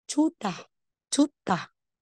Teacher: Chuta. Aspirated. T na may H.